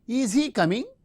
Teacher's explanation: In oral mode, the fronting of the verb and the rising tone, since it is a polarity question or yes no type question, we use the rising tone.